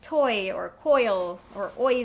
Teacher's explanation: you've got the o sound with the yod afterwards you put o and e together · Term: diphthongs